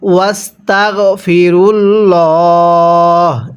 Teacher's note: এখন ওয়াকফের সময় এই হায়ে জমিনের উপরে এই জবরকে আমরা বাদ দিয়ে দিব।